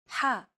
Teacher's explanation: You want to make an H sound, but with the throat constricted a little. Ha. One trick to produce this sound is to push your tongue as far back in your mouth as you can and then say the word hot.